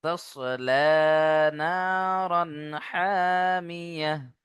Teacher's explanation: মিম জের মি, এখানে হারাকাত, কোনো টান হবে না। হামিয়াহ, আয়াতের শেষে গোলতা থাকার কারণে হা সাকিন করে পড়বে ইনশাআল্লাহ।